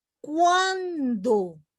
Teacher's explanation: casi la U no se pronuncia, sino la A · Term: diftongo creciente